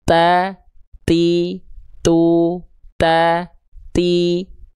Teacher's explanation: salah satu sifat yang akan kita highlight adalah sifat namanya hams, yaitu terpercikan nafasnya. Ada percikan nafasnya, terpercik nafas.